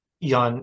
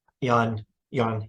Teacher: Yan, you start medium and go low. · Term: medium falling tone